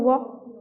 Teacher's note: जीभ तालु दांत ओठों के परस्पर सटने से होता है। लेकिन कहीं भी पूर्ण स्पर्श नहीं होता। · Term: अर्ध स्वर